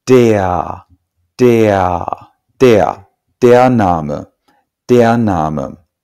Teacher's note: an R at the end of a syllable in German is not pronounced like an R, it's pronounced something like an A. So this word is not pronounced der, but rather der, der, der Name, der Name.